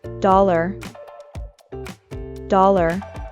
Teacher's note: The O is pronounced as an sound. And the word is stressed on the first syllable.